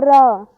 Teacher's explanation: जब भी हम रा बोलते हैं तो र ऐसा लगता है कि हमारी जीभ कंपन करती हुई बोल रही है, तो इन्हें हम प्रकंपित व्यंजन बोलते हैं।